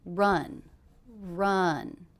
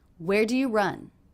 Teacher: this is a question, but did you notice the intonation went down at the end?